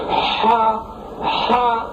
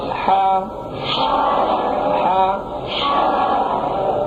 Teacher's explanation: ہا کی آواز گلے سے نکالنی ہے، گلے کے درمیان سے، لیکن انتہائی نرمی کے ساتھ۔ اگر آپ نے زور لگایا تو وہ آواز ہا کی ادائیگی صحیح نہیں ہوگی، زور لگا کر اس طرح پڑھا کرتے ہیں، ہا ہا سختی کے ساتھ، یہ نہیں، نرمی کے ساتھ، ہا ہا، یہ اس کو کہتے ہیں حلوے والی ہا۔